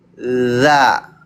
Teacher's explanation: Pakai z bilang za tapi ujung lidahnya ikut maju dikit. dza. Nah, kalau d gimana?